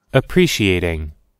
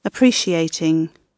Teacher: Напоминаю вам, что в американском английском T в данной ситуации будет меняться на flap T. Это такой между D и T, да, звук.